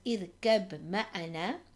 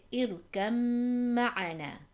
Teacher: The mim has a shadda. So we would completely disregard the ba and we would join the kaf to the mim. So we wouldn't read it as irkab ma'ana, we would say irkam ma'ana. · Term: complete merging